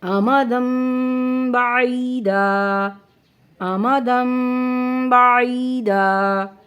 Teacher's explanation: ٹھیک ہے، مجھے امید ہے کہ اب آپ کو اقلاب کا قاعدہ سمجھ میں آ گیا ہوگا کہ نون ساکن اور تنوین کے بعد جب بھی حرف با آئے تو نون ساکن اور تنوین کی آواز کو میم سے بدل کر پڑھیں گے۔ اس قاعدے کو اقلاب کہتے ہیں۔